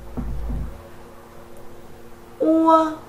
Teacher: âm ua là một nguyên âm đôi gồm có âm u ghép với âm a tạo thành một âm